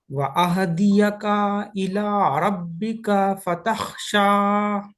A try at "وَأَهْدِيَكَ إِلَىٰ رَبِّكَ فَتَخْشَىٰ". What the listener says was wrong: یہ کاف کو بھی کھینچ دیا آپ، یہ کاف کو بھی کھینچ دیا، دونوں پہ حرکت ہے نا، جلدی پڑھنا۔ وَأَهْدِيَكَ إِلَىٰ رَبِّكَ فَتَخْشَىٰ۔